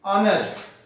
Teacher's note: Honest word is starting with H and it is consonant but it is giving the sound of vowel. H is silent here.